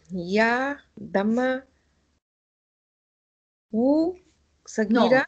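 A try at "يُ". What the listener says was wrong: No. Why you say wu again, ya? What we say this one here? Well, sagira. No, I want the other one, not the big one, okay? I want the small one.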